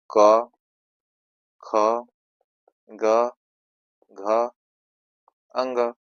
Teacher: क वर्ग जो है कंठ वाला होता है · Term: कंठ वर्ग